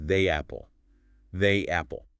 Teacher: Your mouth is stretched wide for the. To move to the open A in apple, a tiny Y escapes. Connected, it is pronounced as they apple.